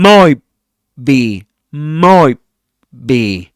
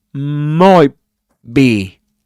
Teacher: He doesn't pronounce the t. He doesn't say might be.